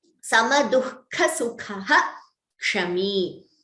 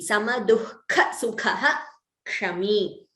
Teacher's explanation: Every time a Visarga is followed by Ksha, the Visarga is chanted completely.